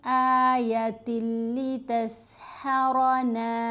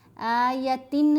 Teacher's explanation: تا کو لام سے ملائیں گے لیکن ساتھ غنہ نہیں